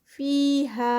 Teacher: فی پہ 2 کاؤنٹس اور ہا پہ 2 کاؤنٹس، دونوں پہ 2 کاؤنٹس